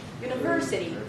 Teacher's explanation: So the ver is the primary stress. So therefore, it's going to be higher in pitch.